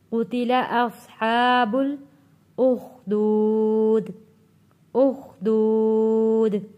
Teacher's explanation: قاف کے اوپر پیش ہے یہ بھی کھینچ کر نہیں پڑھا جاتا